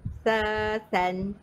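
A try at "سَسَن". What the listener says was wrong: Dia bukan macam tu tau. Kalau kita baca sesan, itu macam kita dah baca dua rakat sini dah. Dia satu rakat je. Laju-laju. Sesan.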